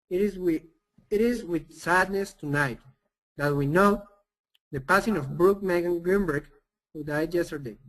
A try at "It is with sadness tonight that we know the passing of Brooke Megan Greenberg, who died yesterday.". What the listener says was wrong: Excellent job. That's much, much better. And your pronunciation of Brooke was really good too.